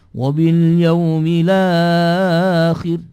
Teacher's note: Nah, kebetulan hamzahnya itu jatuh pada mad badal, maka walaupun harokatnya sudah pindah pada huruf lam, tetap hukum mad badalnya masih ada, sehingga bisa dipanjangkan